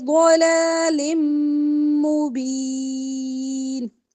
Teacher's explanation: دو زیر کی جو تنوین ہے اس کو میم کے ساتھ ملا کر ادغام کریں گے غنے کے ساتھ